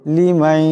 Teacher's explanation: এই নুন সাকিনের পরে ইয়া আসছে, এখানে ইদগাম হয়ে যাবে, ইদগামের এক আলিফ পরিমাণ গুণনা হবে